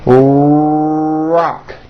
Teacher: notice how my lips are coming forward and my tongue moves back in my mouth, and I push out the R sound. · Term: American R sound